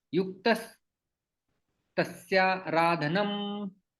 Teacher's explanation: तो यहाँ पर विसर्ग का स बन जाता है और तस्य आराधनम, यहाँ पर दीर्घ संधि होती है, तस्या करता है और ये आ चला जाता है।